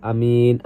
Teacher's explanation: amin sini dibaca matobi'i karena huruf ya-nya dibaca 2 harokat